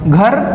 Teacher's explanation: तो निरनुनासिक वर्ण में या मौखिक वर्ण में श्वास वायु कहां से जाती है? सिर्फ मुंह से जाती है